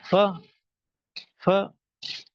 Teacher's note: اوپر والے دانت جو ہے وہ نیچے ہونٹوں کے نرم حصے سے جب وہ لگتے ہیں تو یہ فا ادا ہوتا ہے